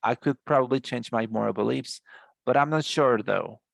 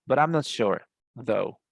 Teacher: this though is always connected to the previous sentence, even though there might be a punctuation mark